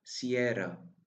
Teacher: the sound ro is a little bit different than in English. We have to roll the r just like in Spanish.